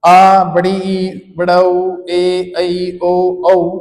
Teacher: उच्चारण में अधिक समय लगता है, अतः इसे दीर्घ स्वर माना जाता है।